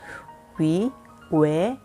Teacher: 이거는 입술 모양은 오로 하고 발음은 에로 하기 때문에 요 라인에 지금 들어가 있습니다. 하지만 거의 대부분의 한국인이 현실 발음에서는 위, 외 이렇게 이중모음으로 발음한다는 거